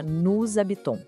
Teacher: Depois, tem as famosas liaisons, as conexões. A gente não fala nous habitons, separado. O som emenda e vira nous habitons.